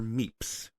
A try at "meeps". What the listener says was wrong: it sounds like you're saying meat.